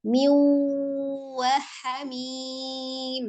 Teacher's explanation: Dilebur bi dengan ghunnah dengan dengung. Jadi asalnya min dijadikan bacaannya miu kemudian ditahan dengan memonyongkan bibir pengucapan huruf waw. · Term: idgham bi ghunnah